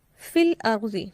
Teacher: فا زیر یا فی، یہاں جزم کی علامت نہیں ہے لیکن یہ یا مدہ ہی ہے، چونکہ آگے اس کے بعد بھی حرف ساکن ہے، لہٰذا اس کو ملا کے پڑھنے میں مد اصلی نہیں ہوگی۔ یہاں حرف مدہ موجود تو ہے، لکھنے میں آ رہا ہے لیکن پڑھنے میں نہیں آ رہا۔